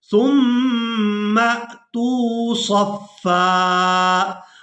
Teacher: اب یہاں پر دیکھیں کہ یہاں ہم نے سا کو میم شدد کے ساتھ ملانا ہے تو غنہ کے ساتھ ادا کرنا ہے، اور اس کے بعد میم کو حمزہ ساکن کے ساتھ ملائیں گے تو جھٹکے کے ساتھ ادا کریں گے